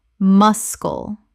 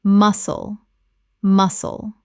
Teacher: wrist wrist Word 196 muscle Common mispronunciation mus-kull Correct pronunciation muscle The C is completely silent. Two syllables.